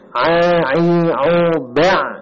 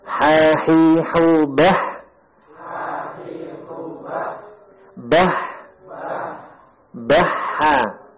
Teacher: Wasatul halq, tengah kerongkongan. Keluar darinya huruf ain dan huruf ha.